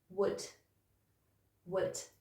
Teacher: you've got a w sound at the beginning, and then it's just ud, ud. And then if you put that together, you've got would, would.